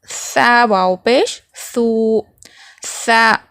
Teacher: سا کا مخرج کیا ہے؟ زبان کی نوک دونوں اوپر کے اور نیچے کے جو دونوں دانت ہوتے ہیں سامنے کے، اس کے بیچ میں سے تھوڑی سی زبان کی نوک باہر نظر آئے گی